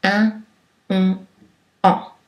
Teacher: Mais lorsque la luette est en position basse, il n'y a pas de contact avec l'arrière de la bouche et donc l'air peut aussi s'échapper par le nez. Ces voyelles sont des voyelles nasales